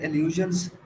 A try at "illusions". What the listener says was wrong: so you miss the s